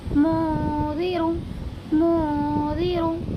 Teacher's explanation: اس نون کے یعنی نون ساکن کی آواز کو بھی ناک میں چھپا کر پڑھیں گے، کیونکہ نون ساکن کے بعد اخفاء کے 15 حرفوں میں سے زال آیا ہوا ہے، اسی لیے اس میں اخفاء ہوگا، اور نون ساکن کی آواز کو ناک میں چھپا کر پڑھیں گے